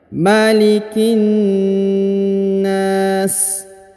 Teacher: Di sini 1 harokat ya, huruf ma 1 harokat, huruf lam harokat i ya 1 harokat, huruf ki juga 1 harokat.